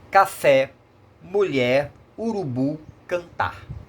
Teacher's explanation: As oxítonas têm a última sílaba mais forte.